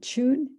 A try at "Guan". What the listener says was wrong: No, it's Guan, because Chun is the Putonghua pronunciation and Guan is the Cantonese pronunciation, and I'm Cantonese.